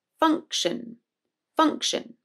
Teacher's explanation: the second syllable is unstressed and therefore the i o becomes a schwa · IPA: /ə/